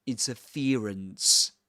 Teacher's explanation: But speaks with a Southern Standard British English, a modern version of that accent, of received pronunciation. So, in this accent, this ear diphthong is usually replaced by an E sound. So he says interference.